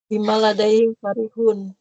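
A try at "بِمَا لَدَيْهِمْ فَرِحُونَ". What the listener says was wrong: Bima. Enggak, itu ma-nya panjang, bukan ma istifham itu. Itu ma'ul.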